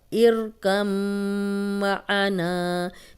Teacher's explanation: میم پہ شد تھی اس لیے ہم نے یہاں غنہ بھی کیا ہے، اور غنہ ناک میں تھوڑی دیر آواز کے ٹھہرانے کو کہتے ہیں. آنا نا 2 حرکات لمبا.